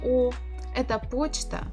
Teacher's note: Because in the first word это, the stress is not on O, so we must pronounce it as А. Почта, the second word, O is under the stress.